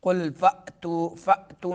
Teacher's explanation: قل فأتو میں حمزہ کو جھٹکا دیں گے، تو میں جو ہے مدہ ہوگا.